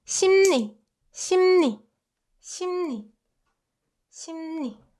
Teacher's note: So instead, we make it more convenient and replace l sound with n sound.